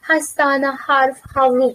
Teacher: tomog'imizdan chiqadigan, ovozimizdan chiqadigan h ni aytmaymiz ekan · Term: yumshoq h